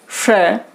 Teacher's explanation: जैसे अगर हम श का उच्चारण करेंगे तो जीभ का आगे का भाग तालु को स्पर्श करता है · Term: तालव्य